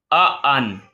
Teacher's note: یہاں پہ غلطی کرتے ہیں، اس کو پڑھ جاتے ہیں ان، آ کو لمبا نہیں کرنا اس حمزہ کو ، ٹھیک ہے، پڑھنا ہے ان، زبر حمزہ زبر آ، حمزہ